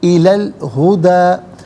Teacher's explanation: الہدا کی لام ساکن کے ساتھ ملائیں گے، درمیان میں سے الف یعنی حمزہ کو حذف کریں گے